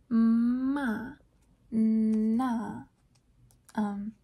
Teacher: So nasal is when this the velum that I was talking about earlier, I believe cartilage that opens or closes the nasal cavity. So when it opens and the airflow is directed out the nose, we get these nasal sounds like ma, na.